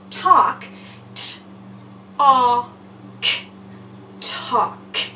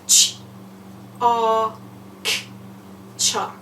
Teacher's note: Our 2 examples here, you do not hear the L.